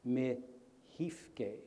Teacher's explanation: So for example, the word for world is kifke, but in the world is mihifke. So the K is changed to an H. And that's part of a very plausible a phonological rule that's found in a lot of human languages called lenition.